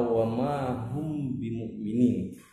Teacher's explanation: Suara mimnya atau suara mim sukunnya itu dibaca samar-samar atau tidak jelas, disertai dengung dua harokat. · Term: ikhfa syafawi